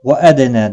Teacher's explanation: فَلَيْسَ عَلَيْكُمْ جُنَاحٌ أَلَّا تَكْتُبُوهَا۔ وَأَدْنَى، دال ساکن پر قلقلہ ہوگا، نا مد منفصل ہے، تین الف کے برابر کھینچ کر پڑھیں گے